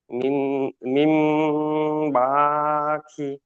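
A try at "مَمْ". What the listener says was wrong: মিম হয়ে যাচ্ছে, হবে না, মাম, মাম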